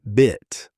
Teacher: Drop the tongue slightly and relax it, and you get I, the vowel in bit.